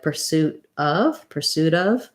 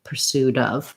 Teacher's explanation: my T will turn more to a flap T and it'll sound more like pursuit of. That's a linked sound.